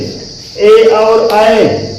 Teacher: ये बोले जाते हैं दो जगह से, कंठ और तालु से। ए और आय कंठ और तालु से बोले जाते हैं। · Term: कंठ तालु